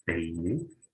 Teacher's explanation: La E es abierta, la I es cerrada. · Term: semi-vocal